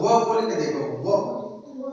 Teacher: अब व का दंत उच्चारण करके देखेंगे तो व बोल के देखो, व तो वो बोल के देखेंगे तो पहले दांत सक्रिय होते हैं। क्या होते हैं? दांत सक्रिय होते हैं। उसके बाद हमारे ओठ सक्रिय होते हैं। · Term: दंत ओष्ठ